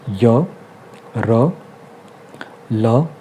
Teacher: तो अंतस्थ जो व्यंजन होते हैं उच्चारण में जीभ का मुख के अंदर किसी भाग से पूर्ण स्पर्श नहीं होता है। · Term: अंतस्थ व्यंजन